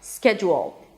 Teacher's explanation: The last two syllables have to be really, really quick. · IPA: ˈskɛdʒəl